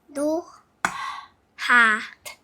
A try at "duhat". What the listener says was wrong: Sabi mo yung tunog ng T.